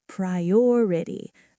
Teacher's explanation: The stress is on the second part